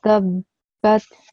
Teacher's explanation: when you join the ta and the ba, because of the shadda on top of the ba, you need to stress the ba sound